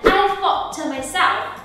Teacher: âm t ở cuối từ thought nó sẽ là âm t stop, tức là các bạn dừng hẳn cho cô luôn, không có thought, không có khúc đó ở phía sau nha.